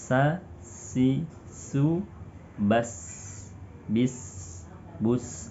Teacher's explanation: Berikutnya, sifat yang dimiliki huruf sin yaitu rokhawah. Ketika melafalkan huruf sin, ya, apalagi ketika disunkan, suaranya lepas. Ya, cenderung suara sin ini lembut.